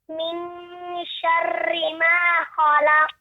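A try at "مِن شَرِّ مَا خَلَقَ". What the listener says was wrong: Coba roknya dikurangi kayak Ustadz kayak gini. Syarri, syarri, syarri, bukan syarri, syarri. Coba getarannya sedikit dikurangi lagi, coba. Syarri, syarri.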